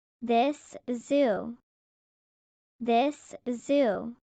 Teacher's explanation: The S in this and the Z in zoo are back of the teeth sounds. They connect.